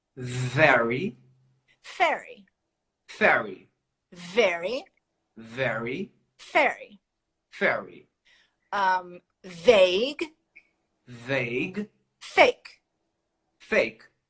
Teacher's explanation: The V is always vibrated.